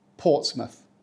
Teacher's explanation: The mouth isn't about your face in this one. It's about the schwa sound.